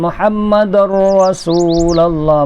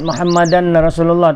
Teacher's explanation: Jadi tanwin dal dua baris baris di atas tu, baris tanwin itu diidghamkan terus kepada ra. Jadi disebut Muhammadar Rasulullah.